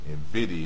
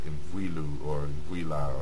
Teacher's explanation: when an R or L sound, this L right here, is followed by an I, this L turns into a D.